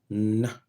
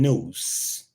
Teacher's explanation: Na is described as voiced alveolar nasal.